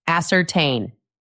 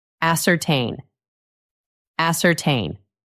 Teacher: The stress is on the last part.